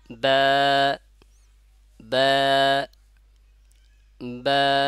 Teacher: তাহলে বা টা উচ্চারণ হচ্ছে কোথা থেকে এটা হলো দুই ঠোঁট থেকে